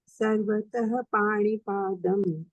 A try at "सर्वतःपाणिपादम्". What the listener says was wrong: नहीं, देखिए विसर्ग जो है ना वो फ बन जाएगा।